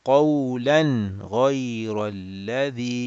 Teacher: we don't stretch the nasal sound of that hidden noon of the tanween, and we just make it short and clear.